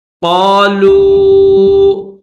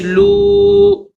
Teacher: قالوا، لام کو کھینچیں گے، لام واو پیش لو، تو لام کے اوپر پیش بھی ہے اور پھر اس کے ساتھ یہ جو واو ہے، اس واو کے اوپر جزم ہے اور چھوٹی مد ہے تو اس کو تھوڑا کھینچیں گے